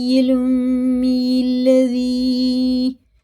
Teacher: لا الہ الا هو یحیی ویمیت فآمنوا باللہ ورسولہ النبی الامی الذی، یا ساکن سے پہلے زیر ہے نا، زیر کی طرح سے کھینچے پڑھیں گے